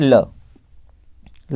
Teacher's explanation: पार्श्विक का मतलब होता है जिसके उच्चारण में हवा जीभ के बगल से निकल जाए, है ना, जीभ के बगल से निकल जाए, उसका मतलब पार्श्विक होता है।